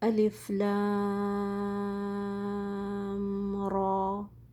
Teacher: the lam here, it has 6 vowel counts long, and then the ra has 2 counts · So there is no gunna in between because they do not merge.